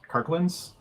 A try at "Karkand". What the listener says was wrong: Karkand? No L.